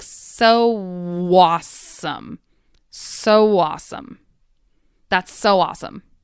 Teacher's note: The W intrudes between the so and awesome. So it sounds like so awesome.